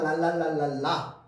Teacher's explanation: 그렇죠 자 그래서 은요 다른 말로 흐름 소리라고도 합니다 라라고 하면은 혀가 입천장에 붙었다 떨어지는데 공기는 어디로 나오느냐 혀의 양쪽으로 흘러나옵니다